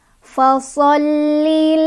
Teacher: Fasholli agak ditekan di lam karena ada tasydid ya.